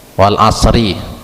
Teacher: Di situ tadi wal ada li'lam qamariyah tadi, wal as tadi karena diwakafkan di situ, ro-nya dibaca tebal dia atau tabkhim, karena sebelum huruf ro itu ada huruf sukun atau shad